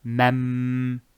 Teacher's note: As you can hear, I did not enunciate the Noon. · So here I will fuse the Noon with the Mim. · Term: idgham